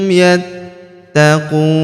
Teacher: La'allahum yattaqun, huruf ta kita tahan dan kita tekan karena terdapat tanda tasydid di atasnya. Yattaqun, huruf ku kita panjangkan 2, 4 atau 6 harokat karena di depan huruf ku terdapat waw sukun sebelum huruf pemberhentian, dan huruf pemberhentian huruf na kita sukunkan atau kita matikan.